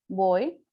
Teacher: the manner of articulation is stop sound and is bilabial. This is the place of articulation.